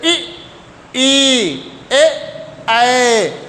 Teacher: जीवा के अग्र भाग से बोले जाने वाले स्वर है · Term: अग्र स्वर